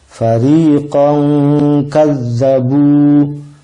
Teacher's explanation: Ada tanwin bertemu dengan kaf. Dia harus dibaca apa? Harus dibaca eng. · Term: ikhfa